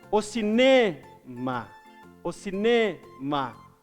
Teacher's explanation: O ne é a sílaba mais forte. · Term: sílaba tônica